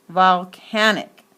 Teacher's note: in volcanic the second syllable is clearly accented